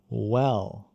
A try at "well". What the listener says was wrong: Não well. Isso é como o português. Com o L aberto. Você vai colocar a língua lá em cima.